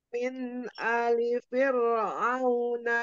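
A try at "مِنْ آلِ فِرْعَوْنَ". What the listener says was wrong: Tadi alifnya min A-nya kurang panjang tadi Min alifir. Min ali.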